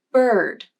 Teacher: the pitch of the voice glides up and then down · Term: stressed